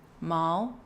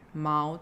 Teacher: remember to go a bit lower with that third tone